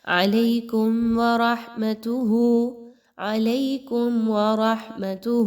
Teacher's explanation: میم ساکن کے بعد واو کا حرف آ گیا ہے، اظہار شفوی کی علامت ہے، یہاں پر آپ نے غنہ بالکل بھی نہیں کرنا۔